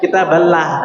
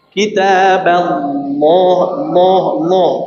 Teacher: Lamnya ditebalkan sejak awal ya. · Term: lam yang tebal